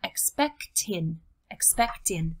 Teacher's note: that strong consonant at the end of expect pushing forward against the vowel on the word in so instead of expect in we have expected Tinh expect in